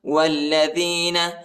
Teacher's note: وہ کو لام کے ساتھ ملائیں گے، الف نہیں پڑھا جاتا